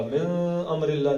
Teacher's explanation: نون کے بعد حمزہ آ گیا ساکن کے بعد تو یہ نون کا اظہار ہوگا